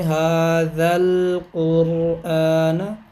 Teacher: یہ الف بھی، یہ دونوں حذف ہو جائیں گے، یعنی پھر ذال کو ڈائریکٹ لام کے ساتھ ملائیں گے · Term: ملا کے پڑھیں گے